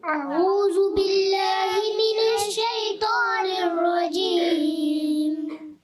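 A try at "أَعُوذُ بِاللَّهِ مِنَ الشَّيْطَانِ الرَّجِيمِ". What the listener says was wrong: تھوڑی سی غلطی ہوئی، ذال کو آپ نے پھر سا جیسا پڑھ دیا.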